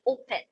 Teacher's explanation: So open is actually stressed on the first syllable. That's why when you add the inflection ing, so it doesn't need letters doubling, as in you can pronounce or spell that as in opening.